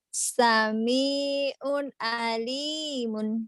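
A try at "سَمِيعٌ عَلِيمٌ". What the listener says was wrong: Oh, terburu-buru. kelebetan unnya. Maksudnya di un. Jangan sami'un alimun, jangan cepat-cepat. Juga jangan lebet-lebet. Sami'un alim juga jangan.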